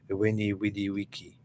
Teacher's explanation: the V is a W sound